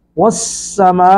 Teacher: والسماء، میم پر مدے متصل ہے، 3 الف کھینچیں گے